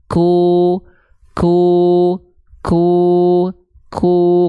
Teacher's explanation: huruf Kaf dia Itu keluar percikan nafas dia punya sifat namanya hams hams itu adalah mengalir nafas untuk huruf Kaf karakternya percikan makanya · kedengaran ada percikan nafasnya kalau qof enggak ada